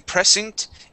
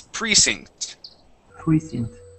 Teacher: the accent goes uh goes at the very beginning on pre